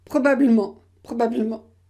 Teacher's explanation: parce qu il y a trois consonnes ensemble blm c'est trop c'est trop difficile à prononcer donc ici vous gardez le eu